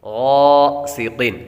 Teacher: غین کے ساتھ الف حروف مدہ ہے اس لیے اس کو ایک الف یعنی دو حرکات کے برابر لمبا بھی کریں گے